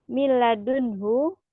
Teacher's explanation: Idgham bila guna, dia jadi nun sukunnya dileburkan ke huruf lam